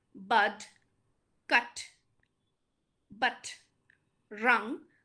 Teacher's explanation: these have a very strong central vowel okay and the syllable uh the last syllable is stressed for